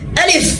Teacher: টান দেওয়া যাবে না, একদম দ্রুত আলিফ